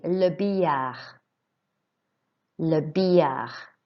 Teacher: So you notice that the double L is like a Y sound in English.